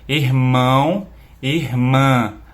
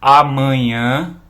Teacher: a gente sente vibrar bastante a região do nariz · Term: sons nasais